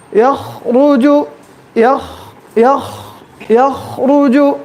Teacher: اگر اس حرف کو اگر ہم لوگ جو ہے چھوڑ دیں گے قلقلہ کر کے تو پھر جو ہے غلط ہو گیا، حرف کا مخرج غلط ہو گیا. یخرج یخرج را جب تک آپ نہیں ادا کریں گے اس وقت تک خا کی آواز باقی رہیں گی